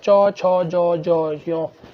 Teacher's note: च, छ, ज, ज, य, ये तालव्य रहते हैं